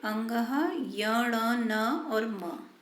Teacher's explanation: है वह नासिका से और मुझसे दोनों से ही निकलती है नाक और मुंह की सहायता से बोले जाते हैं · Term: अनुनासिक